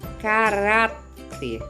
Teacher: paroxítona a sílaba tônica ou seja a sílaba mais forte é a penúltima sílaba da palavra